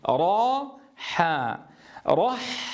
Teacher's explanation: لماذا تفخم معه صوت الحاء؟ لأنها جاورت الراء المفخمة، فانتقل هذا التفخيم إلى الحاء، والأصل أن تخرج الحاء مرققة كما تدربنا وتعلمنا.